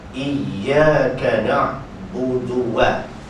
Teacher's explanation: terus mencantumkan dua bibir untuk seketika yang lain, untuk menyebut waw. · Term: muncung bibir